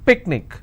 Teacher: Picnic, I will stress on pick.